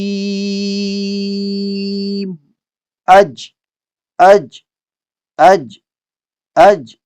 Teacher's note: جیم کی ادائیگی یہ ہے کہ زبان کا درمیان کو ہم نے اوپر کے تالو کے ساتھ پورا ٹچ کرنا ہے، گیپ بالکل بھی نہیں چھوڑنی